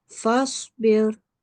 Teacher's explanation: the Sod, it carries a Sukun and it is a letter of Tafkhim. So we will make a thick and broad sound.